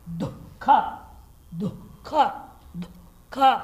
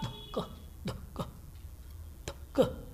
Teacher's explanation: आधा ही विसर्ग बोलना है, अर्ध विसर्ग है।